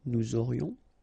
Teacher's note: final S not pronounced, and then you've got this liaison, nous aurions.